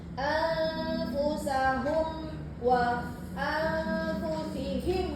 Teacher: >> Syafawi. F syafawi ni kita kena betul-betul rapatkan bibir